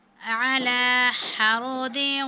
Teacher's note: عَلَى لام پر کھڑی زبر ہے، اس کو ہم تھوڑے سے کھینچیں گے